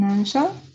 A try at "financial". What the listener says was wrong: Financial. Be careful. You read it once like that, but the second time I think you read it like E. But it's also always going to be like I. Financial.